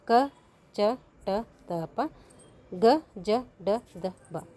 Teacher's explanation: ಕಡಿಮೆ ಉಸಿರಿನಿಂದ ಉಚ್ಚರಿಸಲಾಗುವಂಥ ವ್ಯಂಜನಗಳನ್ನು ಏನಂತೀವಿ ಅಲ್ಪ ಪ್ರಾಣಾಕ್ಷರಗಳು ಅಂಥೇಳಿ ಕರಿತೀವಿ